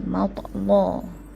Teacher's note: Matla tu bermaksud dia tebalkan lam dengan mentaghlizkan lam. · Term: taghliz lam